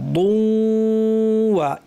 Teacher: তাসদীদের প্রথম অংশে গুন্না, ওয়া বলার সময় গুন্না শেষ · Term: ইদগাম গুন্না সহ